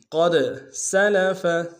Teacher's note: دال حروف قلقلہ سے قلقلہ کریں گے